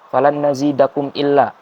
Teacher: Jadi langsung dibaca jelas, lanjut tanpa didengungkan. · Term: idhar syafawi